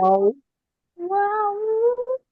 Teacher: ওয়াও দুই ঠোঁট গোল করে পাতলা আওয়াজে।